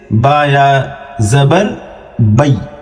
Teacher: یعنی اس کو کھینچیں گے نہیں بلکہ آسانی کے ساتھ بئی پڑھ دیں گے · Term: حروف لین